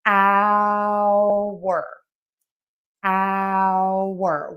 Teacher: We don't say the H on the time hour. Now, there is a variation in American English where hour, o u r, is sometimes pronounced like are.